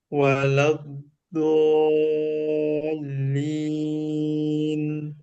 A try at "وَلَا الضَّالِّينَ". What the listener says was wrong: Nah, tinggal ditebalkan lagi. Kurang memanjang ya. Nah, tinggal tebalnya.